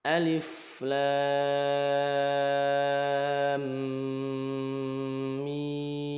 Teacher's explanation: lam ini panjang 6 harakat · mim sukun bertemu mim ini dibaca dengung selama dua harakat alif lam mim mim juga sama di dibaca panjang en harakat